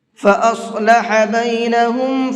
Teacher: فاصلح کے اندر صاد کو پر کر کے پڑھیں گے